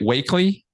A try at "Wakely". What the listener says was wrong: Wackley. It's written Wakely, but it's pronounced Wackley. I remember it because Scientology is wacky. And he's Charlie Wackley.